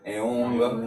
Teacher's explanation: This is guttural or velar sound, nasalized.